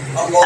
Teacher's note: লামে আল্লাহর ডাইনে জবর লামে আল্লাহ মোটা আল্লাহ